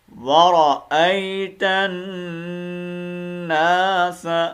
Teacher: ورأي، را کو پر پڑھنا ہے، اور حمزہ کو کھینچ کے ماننا ہے یا کے اوپر، ورأیتن ناس، تا کو آگے ڈائریکٹ نون کے ساتھ ملائیں گے اور یہاں پر ہم نے غنہ کر کے پڑھنا ہے، ٹھیک ہے. ورأیتن، نون مشدد ہے نا، نون مشدد کا وہ پتہ ہے ہمیشہ غنہ ہوتا ہے.